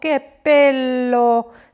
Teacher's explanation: On kõige lihtsam, sellepärast, et sa ütledki need tähed kõik välja, mis paberi peal on, püüad natuke samal ajal häält tõsta, ei räägi sellise monotoonse häälega, nagu eesti keel on, vaid sõnalõppudes, lauselõppudes, che bello, sa tõstad seda häält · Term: intonatsiooni muutumine